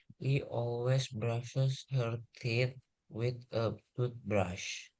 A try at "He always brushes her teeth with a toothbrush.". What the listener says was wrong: Oh, masih bunyi T ini. Teeth, kedengeran banget itu T-nya. With juga sama. Her teeth with, disambung. With sama with a toothbrush.